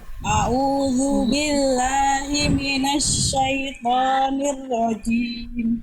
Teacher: Jimnya jangan terpercikan nafasnya